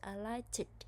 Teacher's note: ed after K would be pronounced D, but it should be pronounced T